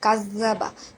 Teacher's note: তাসদিদ অলা হরফ দুইবার উচ্চারণ করতে হবে। এখানে জালের উপরে তাসদিদ আছে, তাই এই জালটা দুইবার উচ্চারণ হবে। একবার কাফের সাথে হবে এবং দ্বিতীয়বার নিজ হরফের সাথে উচ্চারণ হবে।